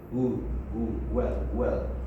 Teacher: the lips protrude and they create a very small space